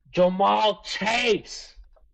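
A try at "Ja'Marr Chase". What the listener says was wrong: Jamar. said Jamal twice.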